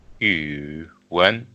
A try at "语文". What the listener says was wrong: No. You are actually like pronouncing the second tone. second tone is 语文,